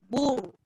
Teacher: Dan raw mati sebelumnya baris depan, bur, tebal.